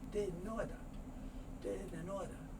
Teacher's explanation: Hey, I didn't order." Now I know this is didn't, and this is order, but very often when it's spoken quickly, the T sound isn't made, so the N sound moves over, and the R sound is so soft it may not even be spoken